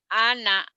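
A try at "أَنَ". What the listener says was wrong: Anak pendek.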